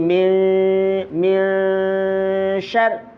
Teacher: Ikhfa itu artinya samar. Suaranya nun dibaca samar di mana kadarnya sama antara samar dengan dengung.